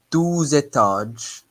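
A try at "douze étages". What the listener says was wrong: Okay, can you say it again? It sounded like 12.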